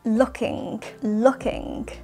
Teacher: We are not pronouncing the final G or G sound in looking, looking. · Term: final G sound